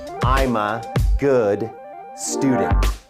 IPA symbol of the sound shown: gɨd